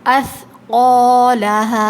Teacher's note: سا، جس طرح ذال نرمی کے ساتھ ادا ہوتا ہے، زبان باہر آتی ہے دانتوں سے، اسی طرح سا میں بھی زبان تھوڑی سی باہر آتی ہے اور نرمی کے ساتھ ادا کریں گے۔ اثقالہا، قاف ہیوی لیٹر ہے، ٹھیک ہے، اور الف اس کے بعد جو آ رہا ہے الف خالی ہے اور اس سے پہلے زبر ہے فتحہ، تو یہ الف مدہ ہے، اس کو کھینچ کے پڑھیں گے۔